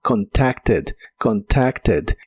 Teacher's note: en este caso sí se pronuncia esa ed, pero con la e suave